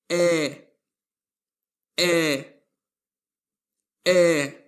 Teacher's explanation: The letter A with diarises or llot in German is read as an open E